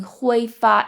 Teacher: that's first tone so it's higher pitched and it's a little more sing song